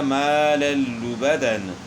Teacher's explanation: اسی طرح ما للبدن، دو زبر کی تنوین کے بعد حروف جر ملون میں سے لام ہے، تو دو زبر کی تنوین کا ادغام ہوا لام میں بلا غنہ